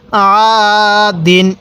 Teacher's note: জবরের পরে খালি আলিফ, তাহলে আমরা সেখানে এক আলিফ টান দিব